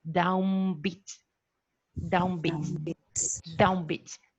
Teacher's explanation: with the nasal articulated as a bilabial so you press your lips together one to the other you press it and utter like a bilivial nasal down bit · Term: bilabial nasal